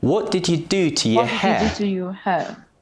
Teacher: what do and hair are stressed you to and your are weak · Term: stress and weak forms, weak forms